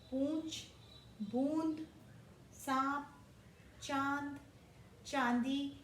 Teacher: इसकी आवाज नाक और मुंह दोनों से आती है। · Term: अनुनासिक